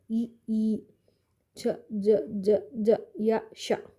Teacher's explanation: ದವಡೆ ಸಹಾಯದಿಂದ ಬರುವಂತಹ ಅಕ್ಷರಕ್ಕೆ ತಾಲಕ್ಷರ ಅಂತ ನಾವು ಹೇಳ್ತೇವೆ